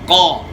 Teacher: دوسرا فرق کہ زبان کی جڑ کا ایک حصہ وہ منہ کی طرف ہے، ایک حصہ گلے والی سائڈ پہ ہے۔ تو اب زبان کی جڑ کا وہ حصہ جو گلے والی سائڈ ہے اس کو اوپر لگائیں گے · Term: قاف موٹا ادا